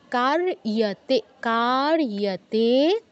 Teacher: কার্যতে, কাতে দীর্ঘ, কার্যতে, ইয়ের উচ্চারণটা যেন স্পষ্ট হয়। রেফের উচ্চারণের পর ইও বলতে হবে।